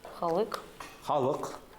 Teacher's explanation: Сначала широкий, потом узкий гласный.